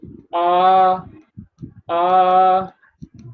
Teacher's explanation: no articulation takes place just the air comes out and it does not face any blockage and passes out without any blockage that sound is called vowel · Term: vowel sound